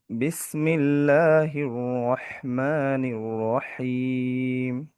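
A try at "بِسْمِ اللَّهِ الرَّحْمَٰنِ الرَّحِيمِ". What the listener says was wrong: র র র আমারটা দেখতেছি তাকরার হচ্ছে। র রি রু বলেন আমার সাথে, র রি রু বলেন দেখি। তাহলে হির রহমানির রহিম হচ্ছে না কেন বলেন? হ্যাঁ, এই তাকরারটা আসছে না, তাকরারটা দেওয়া ফরজ। আপনি যদি হি ওয়াহ বলেন সেটা ওয়াওয়ে চলে যাবে। আপনার রয়ের একটাই সিফাত, সেটা হচ্ছে যে তাকরার।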